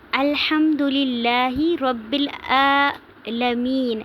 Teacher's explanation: نون کو ہم ساکن کر دیں گے وقف کی صورت میں، اور ہم اس پہ جو ہے تھوڑا سا لمبا کریں گے۔ اس کو یائے مدہ کو ہم نے لمبا کرنا ہے کیونکہ یہ مد وقفی ہے، یعنی کہ وقف کی صورت میں یہاں پہ مد ہو رہی ہے، تو اس لیے اسے مد وقفی کہتے ہیں یا مد عارضی۔